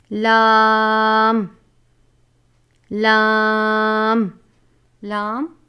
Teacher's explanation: زبان کی کروٹ کے اخیر سے زبان کی نوک تک کے حصے سے جب وہ اوپر کے 4 دانتوں کے مسوڑوں سے لگے